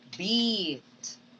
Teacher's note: Long E because it is tense. Okay? And the length of the sound is long.